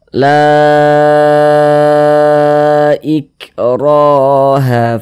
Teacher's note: maka berubahlah dia namanya menjadi Mad Jaiz munfasil panjangnya itu 4 harakat sampai 5 harakat · maka huruf yang memiliki harakat fathah ini dibaca panjang sehingganya la dibaca panjang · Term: Mad thi'i